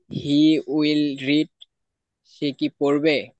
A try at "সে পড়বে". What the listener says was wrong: আপনি কিন্তু প্রশ্নবোধকের মতো উচ্চারণ করছেন, সে খাবে। কিন্তু কিন্তু প্রশ্নবোধক নাই, সে খাবে, আপনি টান দেন প্রশ্নবোধকের মতো।